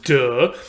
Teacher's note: The only difference is whether you are activating or vibrating your vocal cords or not. We call D a voiced sound because you voice it, you use voice, you activate your vocal cords